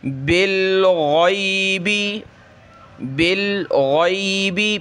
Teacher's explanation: غین کو گلے سے نکالیں گے موٹا کر کے، اس کی جگہ گئی نہیں پڑھنا بلکہ غی پڑھنا ہے، گلے سے نکالیں.